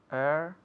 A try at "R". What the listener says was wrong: Air, no. Eso es otro error muy común, te paro. No es air, porque air es aire. R. Porque muchos quieren decir R y quitarle la E, right? But it's R.